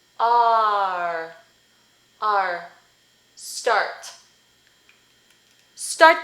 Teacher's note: With the sound ah, as in father. And then you add the schwa plus rhoticity. So rhoticity is that little, this looking thing, the hook, that is on the schwa.